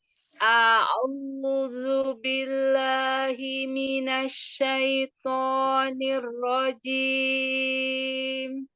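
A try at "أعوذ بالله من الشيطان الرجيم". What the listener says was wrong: Iya, tebalkan di huruf to-nya ya. Asyaitonir rajim. Huruf shin ya. Tafasyinya dijelaskan, Tafasyi itu nyebarnya. Jadi jangan asyaito, tapi asyaito. Iya, tidak pakai bibir. Asyaitonir rajim.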